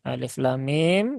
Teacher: yang dibaca panjang itu hanya lam dengan mim ya lam dengan mim saja untuk lifnya dia tidak dibaca panjang dan panjangnya karena ini masuk dalam kategori Mad ee mad lazim · lamnya dibaca panjang 6 harakat kemudian mimnya juga 6 harakat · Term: panjang 6 harokat